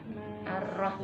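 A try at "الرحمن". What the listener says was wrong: Ya, itu terputus namanya. Jadi harus nyambung. Ar-Rahman, Rahmanir Rahim.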